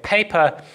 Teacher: there is an aspirated sound for example if you say paper you will feel quite a harsh burst of air coming out and hitting the inside of your hand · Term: aspiration